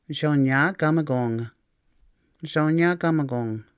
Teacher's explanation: Adding a suffix changes the K to more of a G sound.